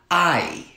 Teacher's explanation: English has a lot of vowels that are diphthongs, which is two vowels put together, like I. So what you know is the vowel I actually starts here, ah, and goes up to E, I.